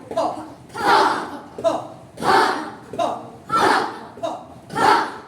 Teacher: দুই ঠোঁট থেকে পাপ অফ এয়ার, মানে মুখের ভেতর থেকে হঠাৎ করে বাতাস বের হবে। ফ। ধাক্কা দিয়ে ফ।